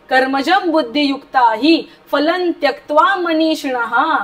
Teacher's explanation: फलं त्यक्त्वा, पुढे त आहे म्हणून लच्या वरती जो अनुस्वार आहे त्याचा उच्चार न होणार आहे. कर्मजम बुद्धियुक्ता ही पटकन बोलायचंय कारण रस्व आहे